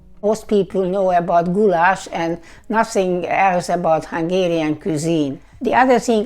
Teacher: the way she articulates the voiced and voiceless dental fricatives, the th sounds in words like other and nothing, respectively.